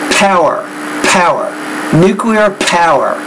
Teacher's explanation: you need to work on the P consonant sound and produce that sound with more air